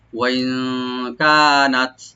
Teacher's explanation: কাপটাকে open করে এখানে তাকে একটু হামস করব